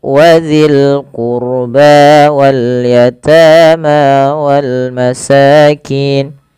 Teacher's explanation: Pada lafal qurba tebalkan rohnya karena huruf ro sukun didahului dengan dhamma